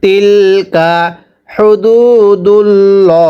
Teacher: আল্লাহ শব্দের পূর্বে জবর অথবা পেশ হলে আল্লাহ শব্দটিকে ল মোটা করে পড়তে হবে।